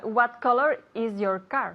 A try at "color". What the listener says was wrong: Color, no cola. Color. Hay que bajar un poquito la mandíbula. Color. Color, ¿ok? Color. No se dice color ni color. Es color.